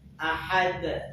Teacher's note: Qalqalah yang bobotnya lebih kuat dibanding qalqalah sughra. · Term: qalqalah kubra